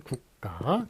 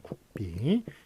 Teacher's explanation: 무성음과 무성음이 만났을 때 한국에서는 요 뒤에 게 된소리가 나는 그런 현상이 있어요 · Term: 된소리 되기 현상